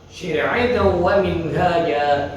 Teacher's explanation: Ini adalah idgham bi gunnah. Mendengung.